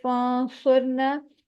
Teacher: نون ساکنہ ہے، آگے صاد ہے، اخفا کریں گے. اور اخفا یہاں ہیوی ہوگا کیونکہ ہیوی لیٹر آ رہا ہے. را ساکن ہے، اس کو پر پڑھیں گے، موٹا پڑھیں گے، کیونکہ پھر ہم پیچھے والے حرف کو دیکھتے ہیں، اس پہ پیش ہے، اس لیے را موٹا پڑھا جائے گا.